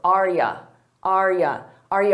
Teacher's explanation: notice that the U becomes more of an unstressed y or Y so it's a very subtle difference uh a y